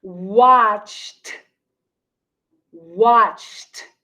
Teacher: e d will have a t sound for example watched watched the word watched ends with a c h sound so then the e d sounds like t